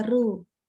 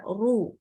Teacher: tidak boleh sedikitpun dibaca tipis tapi harus dibaca tebal